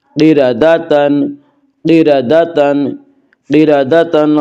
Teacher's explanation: را کے اوپر زبر ہے اس لیے را کو پر پڑھیں گے